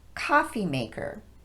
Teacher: We stress the word coffee as we normally would and then de-emphasize both syllables of maker